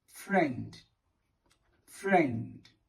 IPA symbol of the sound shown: e